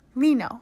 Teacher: This happens when your tongue hits the middle of your mouth and air is released near the sides of the tongue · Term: Laterals